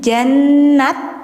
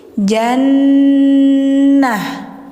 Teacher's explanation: ta bulat ketika mati jadi ha ya. Jadi enggak jan jannat tapi jannah.